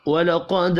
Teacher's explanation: قوف پر پڑھا جائے گا، دال ساکن پر قلقلہ کریں گے